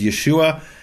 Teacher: the H drops and yahoshua becomes Yeshua